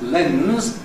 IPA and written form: lenz (lens)